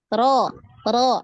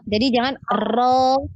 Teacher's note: Ro ini kuat sekali ya takrirnya ya, banyak.